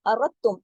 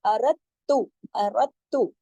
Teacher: دال کی آواز نہیں آئے گی بلکہ ارتم, بلکہ تا کی آواز 2 مرتبہ آئے گی اور سختی سے جوڑا جائے گا